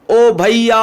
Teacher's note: हम बहुत तेज आवाज जब तक हमारा सांस है अंदर तब तक हम बुलाते हैं तो मतलब समय प्लुत स्वर लेता है ज्यादा